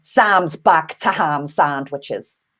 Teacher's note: this vowel sound is going to get broadened to the ah sound as in father